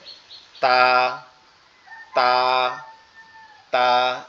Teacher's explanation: আমাদের জিহ্বার আগা উপরের দাঁতের গোড়ার সঙ্গে লাগবে লেগে হালকা করে আওয়াজ হবে